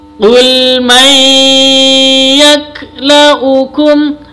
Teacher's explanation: nun sukun bertemu dengan ya, bacaan idgham bi gunna